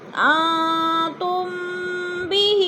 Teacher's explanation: میم ساکن کے بعد حرف با آ گیا ہے تو ادھر اخفاء شفوی، یعنی ناک میں آواز لے جائیں گے، غنہ کریں گے